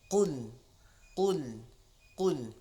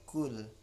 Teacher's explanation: Q berbaris depan, maka kita harus tebalkan bunyinya.